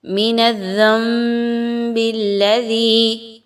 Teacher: ذی کھینچ کے لمبا کر کے مد کو پڑھیں گے. دال کو بہت نرمی کے ساتھ پڑھنا ہے, سیٹی کی آواز کو نہیں لانا, اس میں زا کی طرح نہیں پڑھنا.